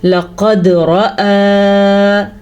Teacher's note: دال پہ قلقلہ، قاف موٹا اور را پر اور کھڑی زبر کی ادائیگی صحیح کرنی ہے